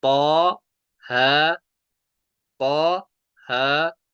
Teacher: तो जब दोनों अलिफ मद्दा है, अब इनको तीन अलिफ नहीं खींचेंगे, इनको सिर्फ एक एक अलिफ खींचेंगे, क्योंकि हरूफ मद्दा को हम एक ही अलिफ तक खींच कर पढ़ते हैं